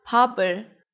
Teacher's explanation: when there's 받침 right before 이응, the sound of the 받침 moves to the next syllable.